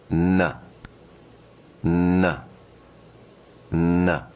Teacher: notice the quality of a nasal sound is that the air and the vibration are directed up through the nasal passages